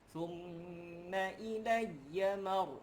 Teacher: Thumma di sini wajibul gunnah. Dengung 2 harakat.